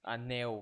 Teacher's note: E o nel, el, né? Tem um som de u no final.